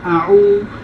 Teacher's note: Okay, and then the ain, the initial form of the ain, so that's the ain, and we connect the waw after the ain, and waw is the long vowel to prolong from ain to waw to say u, a'u.